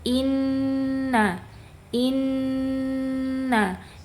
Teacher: Sifat ghunahnya itu dia yang paling tinggi.